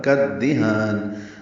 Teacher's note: کاف کو دال سے ملانا ہے، یہ بھی ادغام شمسی ہے